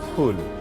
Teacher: এই ফুলটা যখন আপনি বলবেন তখন আপনার দুটো ঠোঁট এক হয়ে একটু বাতাস বেরিয়ে যাবে।